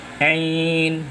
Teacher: ini mad arif li sukun. Jadi bacaannya boleh satu alif, boleh dua alif, dan boleh tiga alif. Yang satu alif nas umpama Ain, boleh.